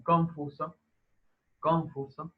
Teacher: hay una pérdida de la distinción entre la N y la M